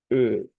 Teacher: es hacer la misma e pero redondeando nuestros labios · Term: e abierta redonda